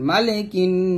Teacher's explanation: কাফ নুন জের কিন, কি গুণনাটা ওয়াজিব গুণনা, জিহ্বাটা উপরে তালুতে লাগিয়ে গুণনাটা আদায় করবেন